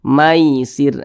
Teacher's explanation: terutama pada huruf Lin yang terjadi pada huruf Ya Sukun itu condong ke e